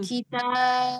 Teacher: di huruf ba yang sukun itu ada qalqalah